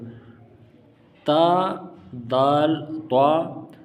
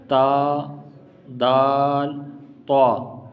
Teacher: آپ نے اپنی زبان کو سامنے جو دو دانت ہیں اوپر والے ان سے آپ نے اپنی زبان لگانا ہے، اور ان کے سر سے نہیں بلکہ یہ جہاں سے اگے ہیں ان کی جڑوں کے ساتھ آپ نے لگانا ہے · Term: حروف نطعیہ